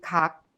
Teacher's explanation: The velar sound kiok is the shape of a tongue that blocks the windpipe, and the sound is made when the rear part of the tongue touches the soft palate, also known as the velum. This sound has the shape when you pronounce the final consonant kiok in kak.